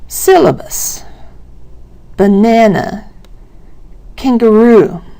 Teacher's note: Syllabus has the first syllable stressed. Banana has the second syllable stressed, and kangaroo has the last syllable stressed. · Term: word stress